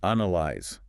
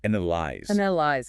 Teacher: The stress is firmly on the very first syllable, not A-N-A.